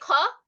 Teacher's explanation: যখন আমরা খ বলি, say খ, it just comes out with a puff of air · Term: aspirated sounds